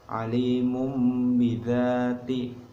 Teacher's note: Iqlab itu nunnya nanti diganti dengan mim.